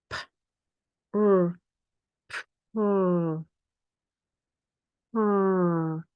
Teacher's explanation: Can you hear the puff of air at the beginning? R. Don't add any vowel sounds in between.